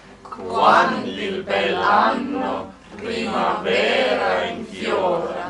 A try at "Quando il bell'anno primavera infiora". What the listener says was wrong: Make sure you do primavera and not primavera. No, yeah, not the wrong one on pre. Primavera infiora.